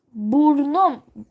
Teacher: Şöyle bir buradaki bir ünlü düşer değil mi? Bakın burada U vardı. U düştü arkadaşlar. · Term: ünlü düşmesi